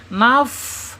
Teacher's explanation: Dia mengalir mengalir napas kita ketika mengucapkan fa sukun. Naf. Awas jangan ditahan. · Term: Alhams